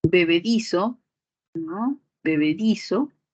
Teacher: separando silábicamente b b di so y la mayor fuerza de voz sería en este di